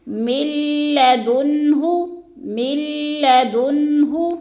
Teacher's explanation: بالکل بھی ناک میں آواز کو ہم نے نہیں لے کے جانا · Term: بغیر غنہ کے